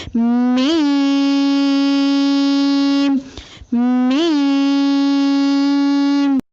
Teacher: میم کی ادائیگی میں ہونٹوں کے خشک حصے کو قدر نرمی سے ملا کر باریک آواز میں پڑھیں